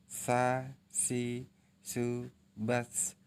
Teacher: Baik, selanjutnya yang keempat, melafalkan huruf Sa dengan menyentuhkan ujung lidah dengan dinding gigi seri bagian atas, kemudian diucapkan dengan mengalirkan suara dan napas dengan lembut.